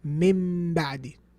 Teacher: So you change the Noon into what? A meme.